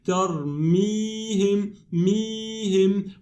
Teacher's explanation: Here we have mim kasra, and the next one is ya sukoon. It's ya mad, not followed or preceded by a hamza or sukoon. This means it's a natural mad 2 beats. We say tarmihim, mihim.